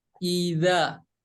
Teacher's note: huruf zal ini makhrajnya atau tempat keluarnya dari ujung lidah menempel ke ujung gigi seri yang atas. Maaf ya, ini ujung lidah nempel ke ujung gigi seri yang atas.